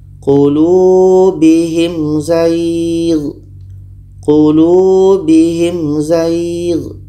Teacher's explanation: Mim jelas, za jelas dan tidak ada dengung. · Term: izhar syafawi